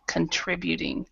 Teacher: the O is kind of like what we call a schwa in linguistics. So it's an sound, contributing.